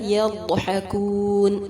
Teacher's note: ضاد کو پر کریں گے، حا وسط الحلق سے ادا ہوگا اور مد عارض کے ساتھ وقف ہوگا.